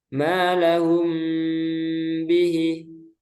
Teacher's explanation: mim sukun bertemu dengan ba cara membacanya menggunakan huruf mim dengan tempo yang dipanjangkan jadi ketika ada mim sukun bertemu dengan huruf ba jadi hurufnya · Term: Ikhfa Syafawi